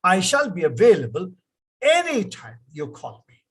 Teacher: the voice has to fall that is intonation